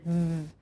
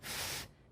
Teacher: When the child says the /v/ she'll feel her vocal cords vibrate, whereas with /f/ they won't.